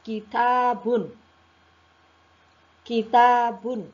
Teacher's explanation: Yang pertama hames. Hames itu artinya berdesis. Jadi seperti ada udara ketika diucapkan ta.